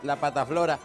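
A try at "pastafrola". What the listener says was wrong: No, no es pata. No, pasta es como decir la masa frola, la masa quebradiza.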